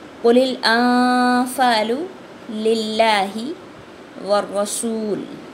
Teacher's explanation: لام کو ساکن کیا ہم نے، را کو پر بھی پڑھا اور اس کی شدت کو بھی واضح کیا شد کی وجہ سے